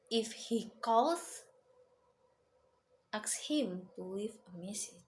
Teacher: The tone rises in the first clause and falls gradually in the second clause.